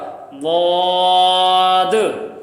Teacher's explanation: زبان کی بائیں سائڈ اوپر کے داڑھوں کے مسوڑوں اور جڑوں سے لگے